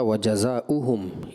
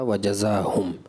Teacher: وجزاؤہم نہیں تھا, یہ لفظ تھا وجزاہم. حمزہ کا آپ نے اضافہ کیا